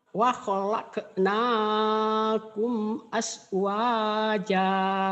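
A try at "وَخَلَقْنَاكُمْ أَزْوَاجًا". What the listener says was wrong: Asnya jangan as, tapi az, z ya, jangan ke s. Sama kol-kolahnya. Wa khalaqnakum az-zaitun, Zainab, Zamzam, azwaja.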